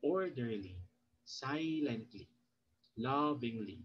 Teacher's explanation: you put the stress when you say it on the first syllable